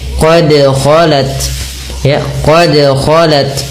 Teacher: huruf dal harus dipantulkan karena huruf dal memiliki salah satu sifat yang dinamakan dengan qalqalah